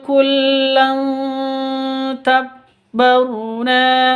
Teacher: Tanwin bertemu dengan ta, samar disertai dengung. Samar disertai dengung, siap-siap ke huruf ta-nya. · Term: ikhfa hakiki